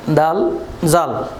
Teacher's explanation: জিহ্বার অগ্রভাগের কিনারা সামনের উপরে দাঁতের সাথে লাগিয়ে উচ্চারিত হয়